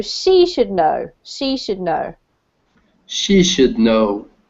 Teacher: you put the emphasis on the person in this case.